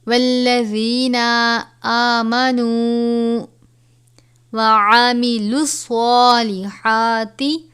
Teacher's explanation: وَالَّذِینَ آمَنُوا وَعَمِلُوا الصَّالِحَاتِ، صاد کے اوپر کھڑا زبر ہے، ہا کے اوپر کھڑا زبر ہے، صاد کو پر پڑھا جائے گا اور ہا کو ہمیشہ باریک پڑھتے ہیں